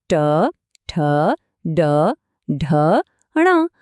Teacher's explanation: હવે ટવર્ગ જોઈએ આના અક્ષરો છે ટ ઠ ડ ઢ ણ અહીંયા તો જીભ થોડી વળીને મોઢાના ઉપરના ભાગને અડે છે જેને મૂર્ધા કહેવાય